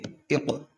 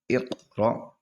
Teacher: حروف قلقلہ میں سے قاف آ گیا، لوٹتی ہوئی آواز نکلے گی